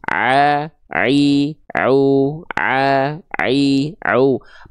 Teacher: yang berkontraksi nanti adalah bagian tengah tenggorokannya yang disebut dengan katup epiglotis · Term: huruf ain